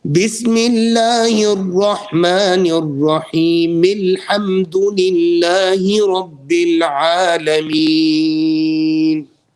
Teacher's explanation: I'm dropping the Hamzat al-Wasl, I'm joining onto the Lam.